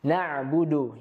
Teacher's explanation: pada kata na'budu, huruf ainnya harus kita perjelas agar tidak tertukar dengan hamzah.